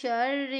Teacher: را کو نہیں کھینچنا، را کیا ہے؟ متحرک ہے۔